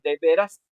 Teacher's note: dice de veras porque la acentuación está en la A